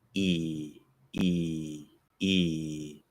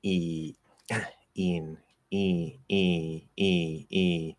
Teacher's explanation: Preparing for an N, E, een, E, E, E, Again, it doesn't have to do that, but it's very common that it will be partially nasalized. A little bit more go through the nose.